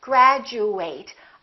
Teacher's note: if it's a verb we fully pronounced eight and it kind of sounds like the number eight